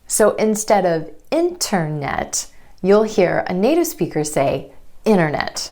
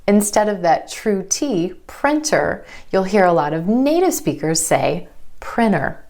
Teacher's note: Sometimes in American English, that T just disappears completely. It happens when the T comes after the N or N sound in an unstressed syllable. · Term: vanishing T